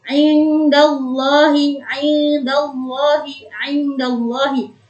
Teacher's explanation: Yaitu apabila ada pertemuan antara nun sukun atau tanwin yang bertemu dengan huruf-huruf ikhfa. dan dibaca samar seperti menambahkan huruf eng di tengah-tengahnya. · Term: ikhfa hakiki